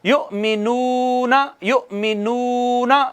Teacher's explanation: ये वाव आ गई आगे, वाव पर ज़बर ज़ेर पेश नहीं है, वाव के पिछले हरफ के ऊपर पेश है, तो ये वाव भी मद्दा हो गई, ये वाव भी मद्दा हो गई, और इसको कितने अलिफ के बराबर, एक अलिफ के बराबर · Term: वाव मद्दा